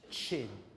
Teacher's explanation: which is a combination of a stop plus a fricative